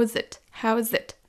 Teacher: on va lier how's avec it, parce qu'il y en a un qui termine par un son voyelle et l'autre qui commence par un son consonne.